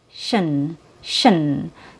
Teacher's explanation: So you don't have to move your lips for your last syllable because it's reduced. It has a schwa sound.